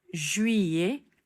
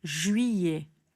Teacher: krajnje t se ne čuje